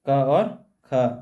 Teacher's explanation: जो क वर्ग है वो बोली जाती है कंठ से। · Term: कंठ ध्वनि